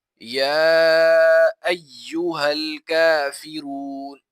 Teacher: یا کے اوپر کھڑا زبر ہے، اسے ایک الف کی مقدار کھینچا جائے گا، اور یا کے اوپر 3 دندانوں والی شکل ہے جسے تشدید کہا جاتا ہے، اسے دبا کر پڑھا جائے گا۔